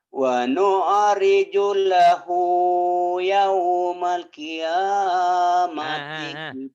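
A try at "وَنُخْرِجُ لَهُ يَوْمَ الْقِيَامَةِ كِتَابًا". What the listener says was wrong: Pak suka pengen cepet-cepet mengucapinnya nih, Pak. Wa nukhriju lahu yaumal qiyamah. Tenang, Pak.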